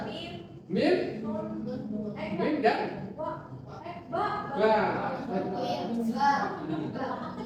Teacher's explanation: Jadi ada asyafatai, dua bibir. Hurufnya apa saja? Mim, dan ba.